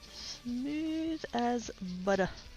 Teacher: she very deliberately makes it a very d sound rather than a very t sound